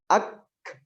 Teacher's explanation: Jadi ketika kita tarik lidah dari makhraj huruf kaf itu bunyi desis. Nah, disitulah hams. · Tapi untuk huruf kaf dan huruf ta, dia syiddah tapi dia sekaligus juga hams.